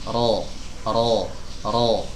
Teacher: lidah belakangnya mengangkat tenggorokannya agak menyempit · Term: tebal